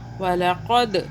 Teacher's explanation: دال پہ قلقلہ کیا، جھٹکے سے پڑھا۔ वलक़द, क़ाफ को मोटा क़ौ पढ़ा, काफ बारीक नहीं पढ़ना।